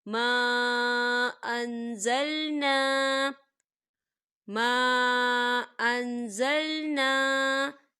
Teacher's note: ما یہاں پر خالی الف سے پہلے زبر ہے اور اس پر مد بھی ہے، تو ہم اسے 3 حرکت کے برابر کھینچیں گے۔